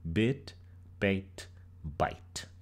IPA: bəit bajt